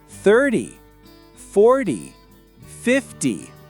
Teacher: The stress is on the first syllable. It's a shorter, sharper sound.